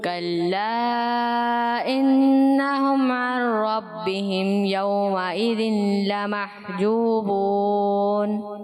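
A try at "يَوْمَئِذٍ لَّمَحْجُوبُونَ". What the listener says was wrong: یومئذ، نون کی آواز نہیں ہے، یومئذ، یومئذ لمحجوبون،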